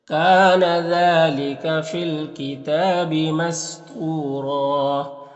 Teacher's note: یہاں پر ایک زبر کے ساتھ الف پڑھیں گے اور را کو پر پڑھیں گے